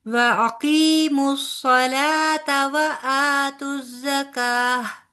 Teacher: یہ صلاتا کا جو تا ہے نا، یہ لمبا نہیں ہوگا